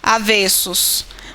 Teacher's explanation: O substantivo destacado, quando escrito no plural, mantém o som fechado da vogal.